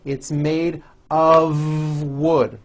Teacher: It's not wood with an unvoiced F. It's all voiced and it's all connected.